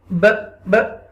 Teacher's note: When you waqfan, okay, waqfan ba pesh bu would be changed into ba sakina, and when ba become ba sakina, then you will read with echo sound, because this ba become qalqala letter